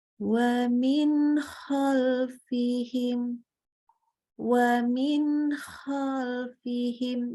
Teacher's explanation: Izhar bacanya jelas, halki dari tenggorokan, izhar halki. Jadi nunnya itu jelas, nggak usah tambah dengung lagi.